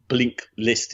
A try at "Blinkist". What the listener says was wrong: Well, it kind of makes sense, doesn't it, to add the L? It feels right, but I'm sure it's Blinkist.